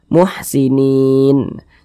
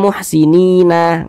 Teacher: huruf nun kan tidak dibaca panjang Makanya kita sukunkan atau kita matikan